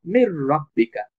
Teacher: তখন মিমটা সরাসরি র কে ধরবে, মির রব্বিকা। নুনটা যেহেতু র এর সাথে যুক্ত হয়ে গেছে তখন র কে আমরা দুইবার উচ্চারণ করব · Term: ইদগাম